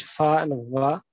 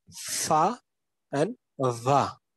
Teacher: labiodentals are pronounced or formed with the upper teeth and lower lip